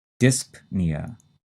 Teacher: the stress is in the first syllable and we say that p